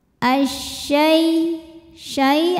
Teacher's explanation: alif lam menghadapi huruf Syamsiah yaitu syin maka alif lam tidak terbaca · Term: alif lam syamsiah